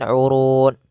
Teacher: Pada lafal urun ada mad arid lisukun. Boleh kita panjangkan 2 harakat, boleh 4 harakat dan boleh pula 6 harakat.